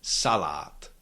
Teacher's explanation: the second and last syllable contains long vowel, but we cannot shift the stress from the first syllable to the second one because it has to stay on the first one. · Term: stress on the first syllable